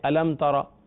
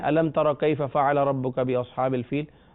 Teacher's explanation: میم ساکن کے بعد تا آیا، کوئی غنہ نہیں کرنا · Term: اظہار شفوی